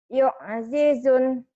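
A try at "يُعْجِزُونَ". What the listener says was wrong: Zunya panjang. Karena matobi ketemu satu huruf hidup dihentikan. Ini yang jadi madaris.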